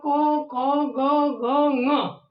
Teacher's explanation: पहला क वर्ग जो है वो कंठ में स्पर्श करता है